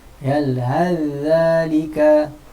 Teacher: Yalhal dha, kalau sa as-sa kan. Ni az-za, bunyi zal terus menghilangkan makhraj dan juga sifat yang ada pada huruf sa.